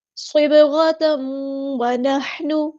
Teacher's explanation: صبغۃ اللہ صاد ہمارا ہیبیٹر ہے، پورا ادا کریں گے، با ساکن پہ کلکلا ہوگا. غین ہمارا ہیبیٹر ہے، پورا ادا کریں گے.